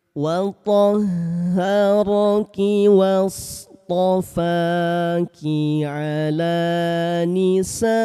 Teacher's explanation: Cara baca panjang empat harakat mad wajib muttasil